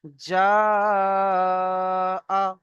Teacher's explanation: হুরুফে মাদের পরে হামজা একই শব্দের মধ্যে এসেছে, তাই একে মাদ্দে মুত্তাসিল বলা হয়। একে 2 থেকে 3 আলিফ পরিমাণ টান দিয়ে পড়তে হয়।